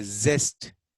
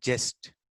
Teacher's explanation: whenever this za sound comes, we substitute with the ja